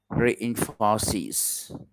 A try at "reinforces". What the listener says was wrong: Reinforces. Very good.